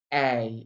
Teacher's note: To make the diphthong A, your tongue glides from A to I. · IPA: /eɪ/